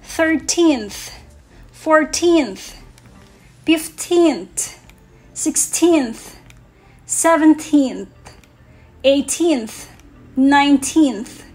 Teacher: Number words ending in teenth have last syllable stress.